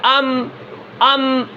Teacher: میم کے اندر بلندی ہے، سانس بند ہو گئی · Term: جہر